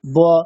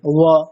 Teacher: পেট কাটা বটা কি করেন, দুটো ঠোঁট একসাথে স্পর্শ করে দেন, ব। আর অন্তস্থ ব দুটো ওষ্ঠ স্পর্শ না করে ব।